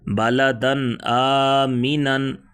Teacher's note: تنوین کے بعد حروف خلقی میں سے حرف آ گئے، یہاں پر اظہار ہوگا